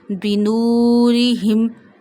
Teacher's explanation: Don't stretch kasra below ra and ha, and read ra in a thin voice.